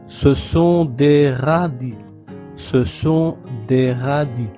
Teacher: Ce sont des radis, sans prononcer le S final.